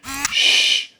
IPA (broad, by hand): ʃ